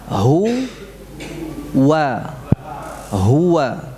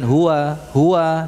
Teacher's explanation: Kita harus betul-betul mengucapkan wau itu dari kedua bibir hu wa huwa ya huwa Jadi bukan hua hua tidak ya